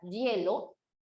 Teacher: al momento de pronunciar la palabra hielo, realmente la palabra hielo no suena a i, sino que suena a y, como un yeísmo. Y como suena como un yeísmo, entonces ahí sí puedes colocar con pretrago y hielo.